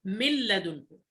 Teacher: كان أصلها من لدنه فأصبحت من لدنه، فأدخلنا النون في اللام فأصبحت لام مشددة، نقول من لدنه. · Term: الإدغام بغير غنة